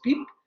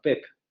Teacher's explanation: en esta situación del francés canadiense, esa vocal se va a abrir por relajamiento